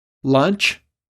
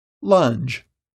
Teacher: The J is a voice sound, so don't forget to add your voice.